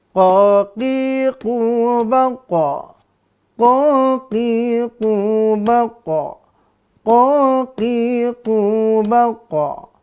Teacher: saya qiqu baqo ingat ada apanya tuh baqo Ma mantul ya kita memantulkan bunyi qo ketika dia sukun atau disukunkan karena waakaf